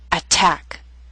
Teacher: word with two syllables stress is on the second attack so T although in the middle of the word is at the beginning of a stress syllable so we have a true t